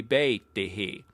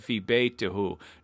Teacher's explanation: After the preposition, the word beit needs to be in the majroor case, so we mark it with a single kasra. But we're not allowed to say ihu in modern standard Arabic, so we have to say ihi instead